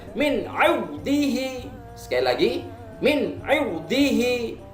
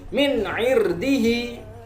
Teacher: ro tersebut boleh dibaca tebal dan boleh dibaca tipis. Huruf ro boleh dibaca tafkhim atau tarkik jika ro itu disukun dan huruf sebelumnya dikasroh. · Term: ro jawazul wajhain